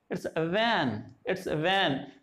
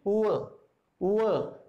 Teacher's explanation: inner part of the lower lip and the upper front teeth